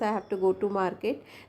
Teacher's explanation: I, go and market are the keywords, means stress words, and rest of the words are unstressed.